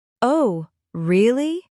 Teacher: When you say really with a rising voice, it means surprise, like, "Oh, really?" But when you say it flat, really, it means you agree or understand.